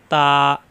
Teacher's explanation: তা জিহ্বার আগা উপরে দুই দাঁতের গোড়ায় লাগবে